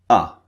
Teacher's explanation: the first one is very very short ah as in but notice the shape of my mouth ah the position is very